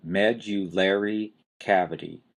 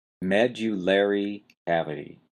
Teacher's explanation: You've got a strong stress on the first syllable, med, and then you've got a lesser stress on the third syllable, layer.